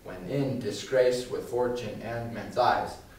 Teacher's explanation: in every line of a shakespearean sonnet you're going to have five coupled syllables the first one being unstressed the second being stressed 10 syllables in every line we can see it here when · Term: iambic